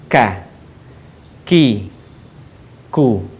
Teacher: diucapkan dengan mengeluarkan udara dengan lembut · Huruf K menyentuhkan pangkal lisan kita dengan langit-langit bagian belakang di depan huruf Qa.